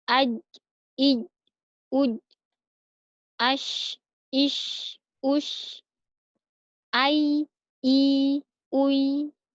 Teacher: tengah lidah dengan langit-langit ada 3 huruf, ja, sya, dan ya